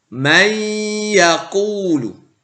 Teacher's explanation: Ada nun sukun bertemu dengan ya. Maka nun sukunnya tidak terbaca karena dimasukkan atau diidghamkan ke huruf ya, may. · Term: idgham bi gunnah